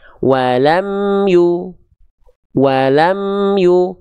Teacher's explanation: maka mim sukunnya dibaca jelas enggak dibaca samar enggak dibaca dengung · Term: izhar syafawi